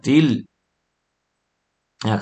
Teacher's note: ติลกระดกลิ้นขึ้นไปเพราะอะไรครับไปสะกดกับตัวรามบนรามมีสุกูนอยู่